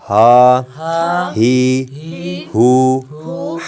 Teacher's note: یہ ہا حروف حلقیہ میں سے ہے، حلق کے نیچے والے حصے سے ادا ہوتا ہے،